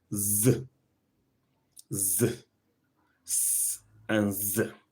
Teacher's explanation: S, voiceless, z, voiced. So when you say z, we're talking about voiced alveolar fricative.